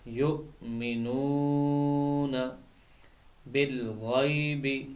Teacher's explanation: یہاں پر یا لین ہے، اس کو بغیر کھینچے پڑھیں گے